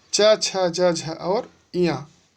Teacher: च छ ज झ और इया, इसका उच्चारण स्थान है तालु।